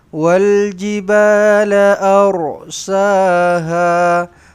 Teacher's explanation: Ra ditebalkan di sini eh. Ra yang bersukun ini, ra yang mati ini dibaca dengan tebal. Kenapa? Sebab huruf sebelumnya berbaris atas.